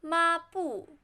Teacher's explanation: 抹 flat tone 布 fourth tone